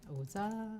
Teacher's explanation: that comes out as O low tone, za high tone with a long ah.